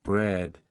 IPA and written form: brɛd (bread)